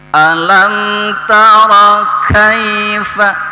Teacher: fathah menghadapi ya sukun. Ini disebut haraf lin ya. Tidak terlalu panjang, tidak sama dengan mad asli.